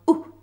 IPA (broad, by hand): ʊ